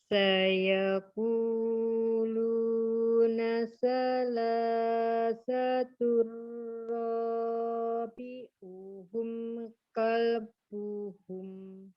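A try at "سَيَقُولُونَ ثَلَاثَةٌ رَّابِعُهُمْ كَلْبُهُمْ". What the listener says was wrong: Iya, alhamdulillah. Nah, bisa loh.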